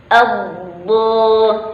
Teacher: Ya, jadi ketika huruf do ini ada penekanan ya, atau istilah, yaitu dari tepi lidah ya, keluar bunyi huruf do itu dari tepi lidah ya, baik dari kanan ataupun sebelah kiri. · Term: huruf janibiyah